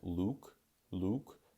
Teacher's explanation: What I mean by that is to have less roundness of the lips, right? When I say a name like Luke, my lips are quite forward and quite rounded.